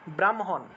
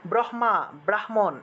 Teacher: এই হ টা কিন্তু আবার স্পর্শবর্ণের মধ্যে পড়ে না সেজন্য এই হ এবং ম এর উচ্চারণের ক্ষেত্রে আমাদেরকে ম টাকে আগে উচ্চারণ করতে হবে আর তারপরে হ উচ্চারণ করতে হবে